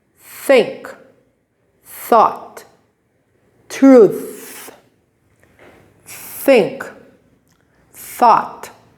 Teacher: the th sound with this symbol is unvoiced voiceless there's no sound